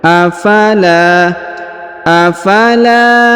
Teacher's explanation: huruf la dipanjangkan dua harakat yang ini karena di depannya terdapat Alif